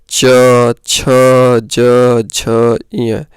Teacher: तालु से आवाज आती है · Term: च वर्ग